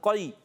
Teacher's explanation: قاف یا زبر قی، قاف کو موٹا رکھنا ہے. زبان کی جڑ تالو کے نرم حصے سے قاف ادا ہوتا ہے